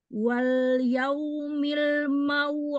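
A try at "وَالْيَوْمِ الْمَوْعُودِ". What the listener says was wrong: Oh, tipiskan lagi dal. Aud. Ud. Ud. Dalnya jangan de. De. Tipis. Itu penempatannya kurang pas itu. Aud.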